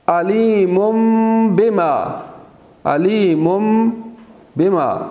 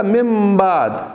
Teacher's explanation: اسی طرح سے ایک حکم ہے اقلاب کا، یعنی کہ نون اور تنوین کے بعد ایک حرف آ جاتا ہے با، اگر حرف با آ جائے تو وہاں پہ اس کو میم میں بدل دیتے ہیں اور غنہ بھی ہوگا۔ مثال کے طور پر علیم بما، علیم بما، یہاں دو میم پہلے سے موجود ہے اور ایک اور میم میں بدل گیا۔